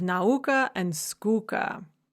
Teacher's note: We can also have feminine rhymes when the stresses fall on the penultimate syllables of the rhyming lines. So you have a stress followed by one unstressed syllable.